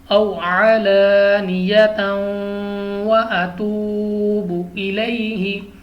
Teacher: دو زبر کی دینے کے بعد حرف واو آ گیا تو واو حروف یرملون میں سے ہے، یعنی ادغام ہے، تو ہم نے ادغام کرنا ہے، یعنی غنہ کر کے پڑھنا ہے۔